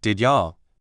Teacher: When people say this quickly, it almost always sounds like did ya. The D sound at the end of did stays, but the Y sound in you changes into a J sound. And the U sound becomes shorter.